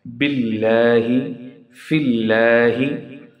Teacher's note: If the letter before Allah carry kasra, then it would be pronunciated as light.